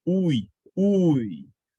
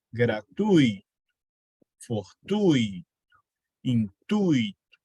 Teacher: Qual é o som mais forte? É o U. O I é a semivogal. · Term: ditongo decrescente